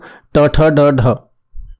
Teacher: जो ट वर्ग होता है वह मूर्धन्य ध्वनियों में आता है